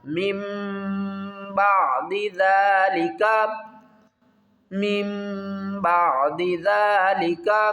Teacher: میم نون زیر من نہیں کریں گے، میم میم زیر مم، مم غنے کے ساتھ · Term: اقلاب